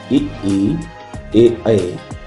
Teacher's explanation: अग्र स्वर वे स्वर हैं जिनके उच्चारण में जीभ का अगला भाग काम करता है।